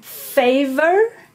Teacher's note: you have your labial dental fricative